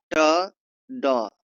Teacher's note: ट, ड में मुर्धा में रुकावट · ट द ड बोलते समय जीभ की नोक मृदा को छूती है।